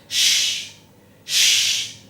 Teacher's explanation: तफशी फैलना यानी शीन के अदा करते वक्त मुंह में हवा का फैलना। जी, जब हम शीन को अदा करें तो इतने प्रेशर से हम उसको पढ़ें कि मुंह के अंदर जोर से हवा सी फैले।